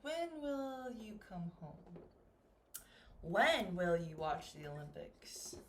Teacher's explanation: more information with my wh word it's going to go down